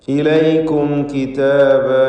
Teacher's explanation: സാക്കിനത്തായ മീമിനെ ഇൽഹാർ ഷഫവി നൽകി മണിക്കാതെ വെളിവാക്കണം.